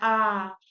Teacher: खुला स्वर मतलब पूरा आ इसमें पूरा खुल के एकदम बोलना पड़ रहा है